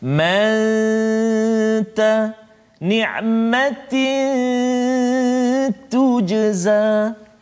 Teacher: Ditetapkan ada dengung, kan? Sembunyikan kesempurnaan huruf nun itu ke dalam huruf ta. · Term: ikhfa hakiki